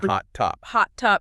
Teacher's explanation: unreleased stops. That's where you stop the sound but don't, pop the air out.